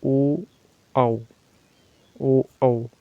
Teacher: हमारे जो कंठ होते हैं उससे बोला ए ऐ, आ ई। और कंठ ओष्ठी, जिसे हम कंठ और ओठ के द्वारा बोलते हैं